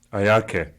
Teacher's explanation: the pronoun a is pronounced as a high tone, and the following high tone verb ke is pronounced on a slightly lower level of pitch